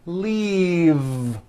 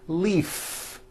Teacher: if you stop the voicing at the end of the vowel e then you would be saying leaf with an unvoiced f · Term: voiced V